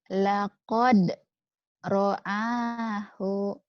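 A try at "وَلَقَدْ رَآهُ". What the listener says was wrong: Wanya mana? Walakod. Ketinggalan. Wanya ditinggalkan.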